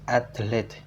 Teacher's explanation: adding a vowel to separate the consonant cluster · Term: Epenthesis